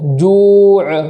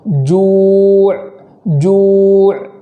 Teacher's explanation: اور آخر کا جو کلمہ ہے جوع، تو وہاں وقف کی حالت میں عین متحرک نہ ہو جائے، جوع ایسا نہ ہو بلکہ اس طریقے سے پڑھیں گے جوع، جوع اس طریقے سے پڑھیں گے۔